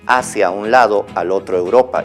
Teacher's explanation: Tenemos aquí un verso de José de Espronceda, de un poema que titula La canción del pirata, que dice hacia un lado, al otro Europa, y si se fijan ahí, las letras que están con rojo están uniendo palabras, inclusive están uniendo 3 palabras en una sola sílaba, ahí donde dice hacia un lado, son 3 palabras que se están uniendo porque son de coincidencia de vocales, A, U, y se están uniendo las 3 como una sola sílaba. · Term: sinalefa